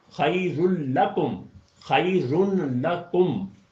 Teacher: اب جب ہم اس کے جوڑ بنائیں گے تو خی پہلا جوڑا بنے گا، دوسرا جو ہے وہ رل بنے گا، نون بیچ میں سے ڈراپ ہو جائے گا